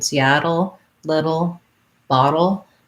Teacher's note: this is the flap t syllabic l combination · t syllabic l combination so just like in seattle little bottle you go from the d to the l with a little bit of a schwa sound